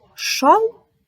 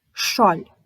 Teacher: твердий л м'який л різні слова і різні звуки